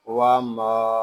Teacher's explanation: یہاں میم کو ہم ایک الف تک کھینچ کر پڑھیں گے کیونکہ یہاں الف مدہ ہو رہا ہے